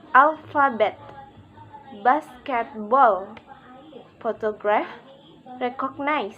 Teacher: Primary stress is on the first syllable and secondary stress is on the third syllable. All other syllables are unstressed. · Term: Stress pattern 3